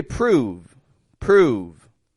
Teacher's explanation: again I'm stretching it out I'm also voicing that V position